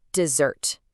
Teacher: if I say dessert with a stress on that first syllable, you're probably picturing a hot, sandy place, right? But if I just shift the stress and say dessert, now you're thinking about cake.